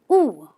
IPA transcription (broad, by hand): uː